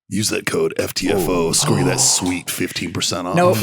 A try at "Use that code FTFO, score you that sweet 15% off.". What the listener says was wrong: Nope. You've gone too macho, man. I need just a little more. Little less gravel. Little more I need a little more. No, see, now you've gone too berry. I need just a little less gravel, a little more.